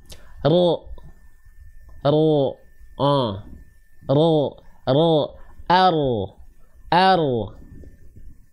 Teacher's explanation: huruf ro itu dilafalkan bukan dari ujungnya banget tapi dari bagian punggung lidahnya